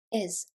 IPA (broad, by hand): ɪz